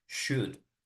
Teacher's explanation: Should is only pronounced the U, like not the O and not the L.